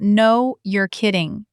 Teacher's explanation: Not a flat no, a stretched out, no, you're kidding.